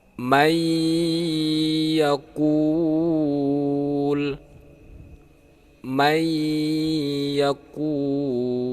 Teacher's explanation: cara membacanya harus memakai dengung dengungnya itu berdurasi dua harkat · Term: Idgham Bighunnah